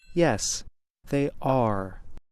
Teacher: we stress the be verb and not or say them louder to make our answer clearer